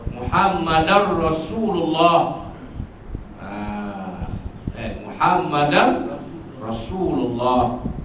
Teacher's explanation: Tanwin bertemu ra. Masuk bunyi tanwin itu masuk ke dalam huruf ra itu tanpa dengung. Masuknya sempurna idgham kamil.